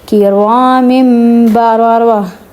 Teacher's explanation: اب یہاں پہ پھر سے دیکھیں دو زیر کے بعد کیا آیا ہے با، تو اس کو نون کی آواز کو ہم میم سے بدل دیں گے، من کی بجائے مم پڑھیں گے